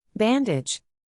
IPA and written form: ˈbæn.dɪdʒ (Bandage)